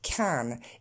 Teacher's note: si je veux l'accentuer, je le dirai en forme pleine avec son vrai A de can. Mais ici, dans la phrase, il est auxiliaire.